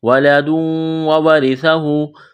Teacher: وَلَدٌ تنوین کے بعد واو ہے، ادغام کریں گے غنہ کریں گے ، وَلَدٌ وَوَرِثَهُ واو اور را، اس کو جلدی پڑھنا ہے،